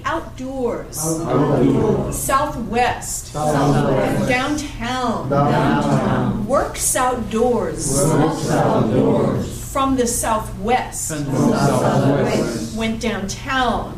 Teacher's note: So if it's an adverb, and what we call a compound adverb, where it tells you about a place and it has two adverbs put together, like out and doors, south and west, okay? You're going to put the primary stress on the last syllable.